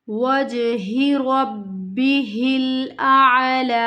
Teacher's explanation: وجہ پہ کلکلا ہو رہا ہے، ہا کو نہیں کھینچنا، وَجْهِ رَبِّهِ الْأَعْلَى، ربی ہل نہیں پڑھ دینا اس کو، إِلَّا ابْتِغَاءَ وَجْهِ رَبِّهِ الْأَعْلَى إِلَّا ابْتِغَاءَ وَجْهِ رَبِّهِ الْأَعْلَى وَلَسَوْفَ يَرْضَى۔